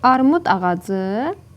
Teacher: Armud D ilə bitib, amma özündən sonra A saitə başlanan söz gəldiyinə görə D kimi tələffüz olunar.